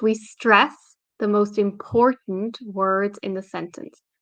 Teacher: I put stress on stress and important